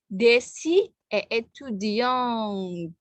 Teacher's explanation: ada e di belakang sehingga t-nya bunyi. Kalau yang maskuline tadi kan nggak ada vokal di belakang t kan, étudiant kan, saya tulis ya, étudiant dan étudiant.